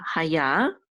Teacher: And the accent is on the last syllable.